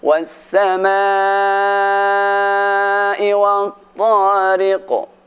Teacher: Ayat pertama dan kedua diakhiri dengan huruf qaf. Cara membacanya sama, ada sedikit penebalan.